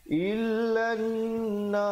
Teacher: dengungkan lan, dengungkan 2 harakat